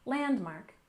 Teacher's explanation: Landmark we stress the first syllable